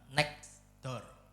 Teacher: Contohnya ya kayak frasa next door di dunia nyata huruf T-nya hilang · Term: penghilangan bunyi